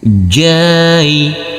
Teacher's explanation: Huruf jim yang berfathah a bertemu dengan huruf ya sukun harus kita lembutkan juga karena ini adalah bacaan lin